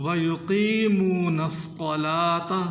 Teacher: بعض لوگ اس میں غلطی کر جاتے ہیں، پڑھتے ہیں وَيُقِيمُونَ الصَّلَاةَ، اس کو کھینچنا ہے قاف کو، وَيُقِيمُونَ الصَّلَاةَ، صاد کو موٹا کرنا ہے، تا کو باریک